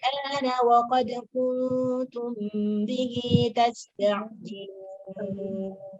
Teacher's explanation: Jadi kalau kita mau praktek al-ana yang dibaca dengan ibdal. Berarti kalau dibaca ibdal panjangnya 6 harakat